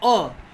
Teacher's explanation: मध्य स्वर में आता है अ बोलेंगे तो जीभ का सिर्फ मध्य भाग ही क्रियाशील रहेगा